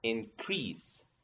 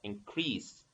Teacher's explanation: So as a verb, increase. The stress in the second syllable, increase. And as a noun, increase.